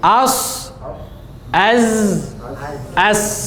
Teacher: Ujung lidah bertemu dengan pangkal gigi seri di bawah.